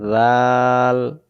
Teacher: জাল অক্ষর জিব্বা আগা থেকে নরম করে পড়তে হয়